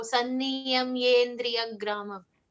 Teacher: We do not need to pronounce the E separately. It comes along, when it gets joined, it merges with the letter ya before it.